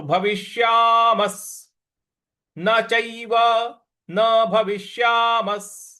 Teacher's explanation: तो भविष्यामस्, म के बाद जो विसर्ग है उसका उच्चारण हमें स ले आना है।